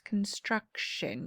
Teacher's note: You kind of just blend it, makes the sh sound. Okay, so you don't really add the T, you really add ION, but it changes how you spell or you say the word.